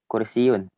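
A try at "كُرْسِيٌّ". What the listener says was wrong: Nah, kursiyun, jangan lupa ya-nya pakai tasdid, kursiyun ya. Kursiyun.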